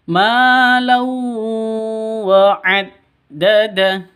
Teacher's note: tanwin bertemu dengan wawu. Cara bacanya masuk ke wawu disertai dengung 2 ketukan karena idgham bi gunnah.